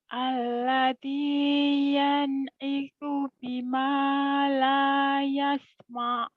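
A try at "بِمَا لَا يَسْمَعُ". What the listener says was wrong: Makanya jangan mo, jangan gitu. Neken ke bawah, jangan ke hidung ke atas. Mo bima la yasma, jangan ma. Neken ya kayak Kalau ngeden kan ke bawah ya bukan.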